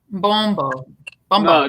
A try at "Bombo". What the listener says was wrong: No, there's no M here. There's no Bombo.